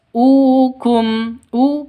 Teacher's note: u panjang dua ketukan karena ada wau mati diawali dengan dommah mad asli atau mad thobi mad thobi'i.